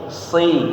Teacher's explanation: Huruf so-nya jangan berubah jadi shin, jangan nashirin, bukan shi tapi si.